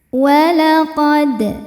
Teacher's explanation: Di sini ada hukum qalqalah sughra, sebab ada huruf qalqalah yaitu dal yang sukunnya sukun asli dan berada di tengah bacaan. Cara membacanya dipantulkan dengan pantulan yang kecil. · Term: qalqalah sugro